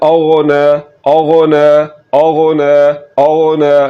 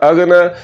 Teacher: अगर इसको पढ़ा अगन तो फिर ये गैन नहीं बल्कि ये गाफ की आवाज़ निकल रही है जो कि उर्दू वाला लफ्ज़ है। तो गाफ की आवाज़ नहीं निकालनी, आपने गैन की आवाज़ निकालनी है। · गैन को हमेशा पुर यानी कि मोटा करके पढ़ा जाता है